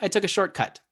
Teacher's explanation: You hear the second T more prominently than the first